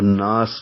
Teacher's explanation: اور آگے سین سیٹی جیسی آواز سے، سین کے نیچے زیر ہے وہ ملا کر پڑھیں گے تو یہ زیر پڑھیں گے، اور اگر وقف کریں گے تو زیر ختم ہو جائے گی، سین ساکن ہو جائے گا تو ناس بن جائے گا۔